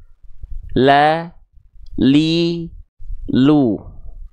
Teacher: dari tepi lidah bagian depan kiri oke menyusur sampai ke ujung lidahnya begituun tepi lidah bagian depan kanan menyusur sampai ke ujung lidahnya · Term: huruf lam